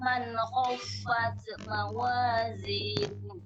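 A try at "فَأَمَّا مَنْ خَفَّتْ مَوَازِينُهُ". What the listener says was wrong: Ulangi lagi, ada yang salah tadi. Taknya itu terlalu berlebihan. Kan kita kemarin sudah belajar tak.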